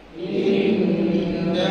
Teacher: Nun sabdu bertemu sebelumnya huruf berbaris. Maka perlu tekankan sebutan innahu. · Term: wajib gunah